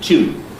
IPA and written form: tʲjuːn (tune)